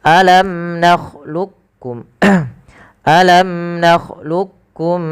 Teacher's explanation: membaca aklamlukum ini ada dua ada dua pendapat yang pertama dengan Idgham Kamil ya memasukkan langsung huruf Kaf kepada huruf kafnya secara utuh dan yang kedua masih menyesaikan yaitu idgham naqisnya ahah tapi kami